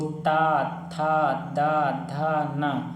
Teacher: आपकी जो अग्रभाग की जीभ है उसको आपको दांत के ऊपरी हिस्सा में टच कर रही है।